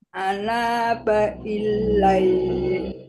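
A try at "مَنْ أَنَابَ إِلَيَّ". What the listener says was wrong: Bukan. Itu ditekan di lamnya itu, Ibu. Ilai. ILAYY gitu gimana Bu baca?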